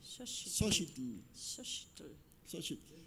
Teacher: La TL se pronuncia pegando la lengua al paladar. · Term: la campanita del náhuatl